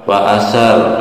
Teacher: ada ro sukun itu ditafhim ya, tebal. Kenapa? Lihat huruf sebelumnya ada tanda fathah di huruf sa.